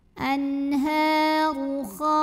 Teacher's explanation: Huruf ra dibunyikan secara tafkhim sebab barisnya dhammah, dibacanya tebal.